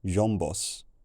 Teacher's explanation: this voiced aspirate, b, which I'm really bad at pronouncing, just collapsed into a normal b sound, producing jombos.